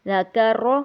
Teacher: تو چونکہ را کے پچھلے حرف پر زبر ہے تو ساکن ہونے کی صورت میں اس کو موٹا کریں گے